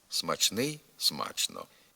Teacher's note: допускається й паралельний варіант вимови із сполученням чн